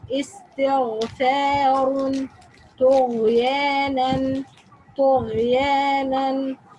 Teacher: Ghain is pronounced from the top part of the throat. It's the same part like if something itchy, you try to remove it or do gargling.